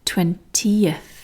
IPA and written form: twentiəθ (20th)